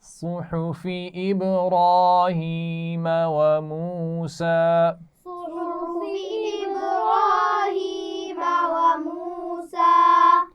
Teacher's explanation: صاد کی آواز موٹی ہے، حا کی آواز باریک ہے